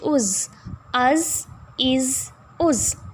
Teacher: سٹی کی آواز آنی چاہیے زا کو ادا کرتے ہوئے